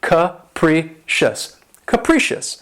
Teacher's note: the stress is on the second syllable and keep in mind that first syllable has that schwa sound